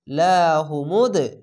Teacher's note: দালের ওপরে সাকিন, তার জন্য কলকলাটি ধাক্কা মেরে নিচে সাউন্ড আসছে। লাম যাবার লা, হা পেশ হু, লাহু মিম দাল পেশ মুদ, লাহু মুদ, এভাবে ধাক্কা মেরে নিচে সাউন্ড আসবে।